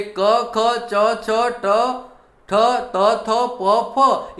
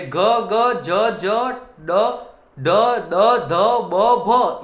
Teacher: ક, ખ, ચ, છ, ટ, ઠ, ત, થ, પ, ફ એ અઘોષ વ્યંજન છે, અને ઘ, જ, જ, ડ, ડ, દ, ધ, બ, ભ એ જે વ્યંજનો છે એ ઘોષ ઉત્પન્ન કરે છે